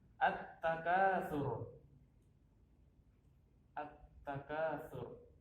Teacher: Tidak ada lamnya, tidak terbaca. Diganti dengan langsung masuk ke huruf yang selanjutnya. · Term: idgham syamsiyah